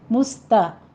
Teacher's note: سین پہ ہمز کریں گے سیٹی کی آواز کے ساتھ ، تا باریک پڑھی جائے گی، قیم میں آپ نے قوف